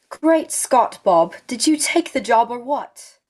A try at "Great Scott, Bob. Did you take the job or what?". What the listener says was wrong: Do it for me one more time and make the last word have the same sound. So when you say what, round your lips a little bit. What?